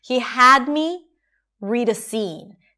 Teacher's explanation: So the 'he' is reduced, 'had' is long and higher in pitch, 'me' is reduced again: 'read a' - reduced-reduced. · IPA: [a]